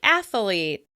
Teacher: The word athlete often gets an extra a in the middle and sounds like athalete.